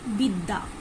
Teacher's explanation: ডাব্লিউ মতো। কখনো কখনো এই অন্তস্থ বয়ের উচ্চারণ ভি এর মতো হয়ে থাকে।